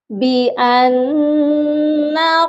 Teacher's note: بِأَنَّ یہاں پر نون مشدد ہے اور نون مشدد پر ہمیشہ غنہ ہوتا ہے